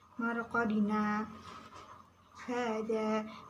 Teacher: Marqadina hada bacaan saktah, terdapat di surat Yasin ayat 52, berhenti dua kali ketukan